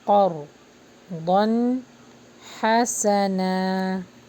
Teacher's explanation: قا کو بھی ہیوی پڑھیں گے اور را کو بھی